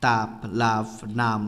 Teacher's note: দুই ঠোঁট অর্থাৎ উপরে ও নিচের ঠোঁটের সাহায্যে উচ্চারিত ধ্বনিগুলো হলো দ্বিওষ্ঠ। তাপ, লাভ, নাম শব্দের প, ফ, ম এই শ্রেণীর ধ্বনি।